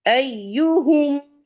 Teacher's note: یہ ج نہیں ہے، یا ہے. یا زبان کا جو مڈل پورشن ہے نا آپ کا وہ تالو کی طرف جائے گا یعنی کہ پیلٹ پہ، اور گیپ رہے گا پیلٹ اور مڈل ٹنگ کے بیچ میں